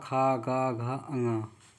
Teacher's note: अगर आप बोलिए का ख ग घ अ तो कंठ से निकलते हुई आपको एहसास होगी